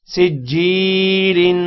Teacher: یا ساکن سے پہلے زیر ہو یا مدہ ہوتا ہے اور یا مدہ کو ایک سیکنڈ لمبا کرتے ہیں